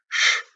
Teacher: Look at this ush, which is a cerebral sha